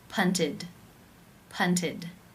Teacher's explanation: This means it is case 3, where the ED is pronounced as the I as in sit with the D sound